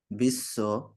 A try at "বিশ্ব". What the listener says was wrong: দেখুন, এটা কিন্তু বিশ্ব নয়, কি হবে? হ্যাঁ, তালব্য স। সব স এর উচ্চারণই হবে স, এইভাবে স। স।